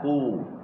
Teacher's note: lepas pada qaf tu kita mucung mulut sebab harakah dia dhamah